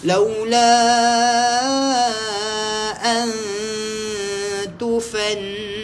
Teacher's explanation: ikhfa hakiki nun kosong jumpa dengan ta dengungkan dulu baru sebut huruf ta